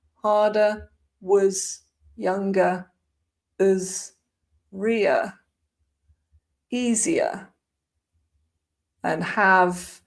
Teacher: Weak forms all over the place as usual. We've got the schwa everywhere.